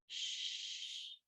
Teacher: But if you say shh, there's no sound, so it's unvoiced. So when you're saying the voice, the amount of air that comes out an awful lot more with an unvoiced sound, but just very little with a voice sound.